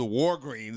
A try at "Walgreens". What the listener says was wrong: The Walgreens. Walgreens. Not Walgreens. There's no R.